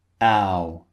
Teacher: Starts wide and finishes rounded.